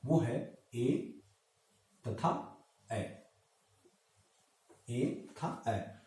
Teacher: जिसमें कंठ और ताल इन दोनों के मिश्रण से, इन दोनों के सहयोग से जिस स्वर का उच्चारण होता है उसको कंठ तालव्य स्वर के नाम से जानते हैं